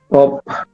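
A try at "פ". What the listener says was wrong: Cough. F yung dulo. Cough. PH po or F yung dulo niya.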